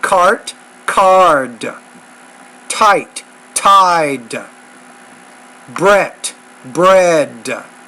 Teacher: on that T sound you definitely need to put a little more air when you pronounce that sound